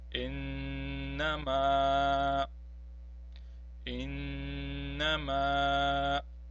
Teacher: we have a noon which has a tashdid, hence we have to prolong it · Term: noon mushaddad